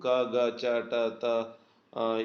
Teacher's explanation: ಅಲ್ಪ ಅಂದ್ರೆ ಕಡಿಮೆ ಪ್ರಾಣ ಅಂದ್ರೆ ಉಸಿರು ಕಡಿಮೆ ಉಸಿರಿನ ಸಹಾಯದಿಂದ ಹುಟ್ಟುವಂತಹ ಅಕ್ಷರಗಳು ಅಥವಾ ಉಚ್ಚಾರಣೆ ಮಾಡುವಂತಹ ಅಕ್ಷರಗಳ ಅದನ್ನ ನಾವು ಅಲ್ಪಪ್ರಾಣಾಕ್ಷರಗಳು ಅಂತ ಕರೀತೀವಿ ಅವು 10